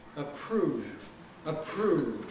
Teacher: The aspiration takes the form of devoicing the R. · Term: voiceless R